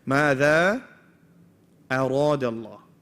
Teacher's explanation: It's got a fatha on it. So the Ra is what's becoming heavy, not the hamza.